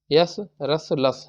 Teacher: अब देखो कंठ को छोड़ के तालू से यस तालू मूर्धन्य में रस दंत में लस